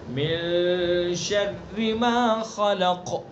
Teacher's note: قاف کے اندر وہی کام کرنا ہے جو فلق کے اندر کیا ہے ہم نے. فلق میں یعنی قاف کو پر بھی پڑھیں گے، قلقلہ بھی کریں گے